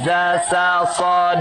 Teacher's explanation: di ujung lidah, dekat gigi seri